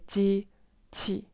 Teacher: you de-stress the second syllable. So you say 机器.